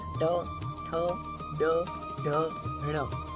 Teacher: आपकी टंग ट्विस्ट होगी, जबड़े को टच करके वापस आएगी, तो इसको बोलते हैं मूर्धा।